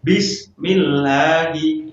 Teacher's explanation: Ya, jadi lam itu dibaca tipis. Ya, lam dibaca tipis pada kalimat Allah yang sebelumnya ada huruf yang berharokat kasroh